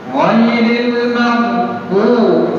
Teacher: দতের উচ্চারণটা মুখের এক পাশ থেকে আনতে হবে জিহ্বার গোড়ার দিক থেকে